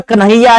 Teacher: कन्हैया है पे जोर है, कै पे जोर नहीं है, तो क्या करेगा, लघु रहेगा, गुरु नहीं बनेगा।